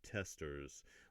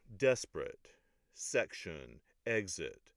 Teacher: All of them have that rhythm to it where the accented syllable is on the first syllable instead of the second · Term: trochees